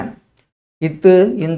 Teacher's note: மேல்வாய் பல்லடி நாவின் நுனியை தொடுவதால் பிறக்கின்றது.